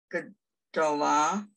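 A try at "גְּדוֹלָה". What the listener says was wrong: What's this vowel? No, it's not O. What's this vowel? Who remembers?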